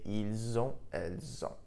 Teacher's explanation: So in this case, because on, O-N-T, begins with a vowel sound, we link the two sounds together · the S in il, elle, which is normally silent, was actually pronounced, and I pronounced it like a Z. This was intentional.